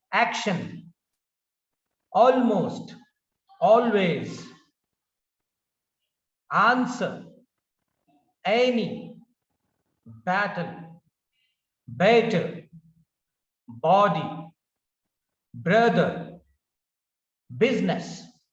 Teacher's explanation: So first syllable is given stress. The intonation is on the first syllable. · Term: stress on the first syllable